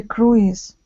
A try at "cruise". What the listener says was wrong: And in this word, we actually do not pronounce the I, so it's cruise.